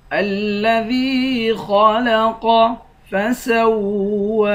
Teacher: کر یا کو ایک الف کی مقدار کھینچ کر پڑھیں گے خا اور قاف دونوں کو موٹا پڑھیں گے